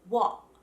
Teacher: if a British person is not going to pronounce their T's, they will stop the sound in their throat.